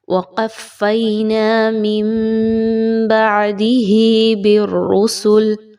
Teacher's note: یاد رکھیے تنوین یا نون ساکن کے بعد جب بھی با کا حرف آتا ہے تو وہاں پر اقلاب کا قاعدہ فالو کیا جاتا ہے، اور غور کریں تو یہاں پر بھی چھوٹی سی میم اوپر مینشن کی گئی ہے، یعنی آپ نے یہاں پہ نون کی آواز نہیں پڑھنی بلکہ میم کی ساؤنڈ جو ہے وہ نکالنی ہے، اسی کو اقلاب کا قاعدہ کہا جاتا ہے۔